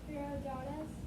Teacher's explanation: Your voice is going up at the end, which means you're questioning it.